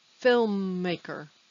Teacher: may be difficult to say l and m film film maker you don't have to make the m longer just because there are two m's m is naturally a kind of long sound so don't worry